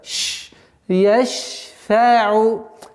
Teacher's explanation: Шин – свойство тафаши, и поэтому нужно немножко удержать.